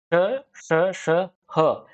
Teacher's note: जब आप इनका उच्चारण करते हैं तो एक घर्षण सा उत्पन्न होता है और गर्म हवा मुख से बाहर आती है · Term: ऊष्म व्यंजन